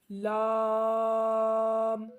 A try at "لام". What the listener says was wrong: ناک میں آواز نہیں لے کے جانی, لام نہیں پڑھنا, ٹھیک ہے.